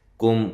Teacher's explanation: کاف باریک ہے، میم ساکنہ کا اظہار ہے